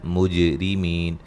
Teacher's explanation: جیم پہ قلقلہ کریں گے، را کو باریک پڑھیں گے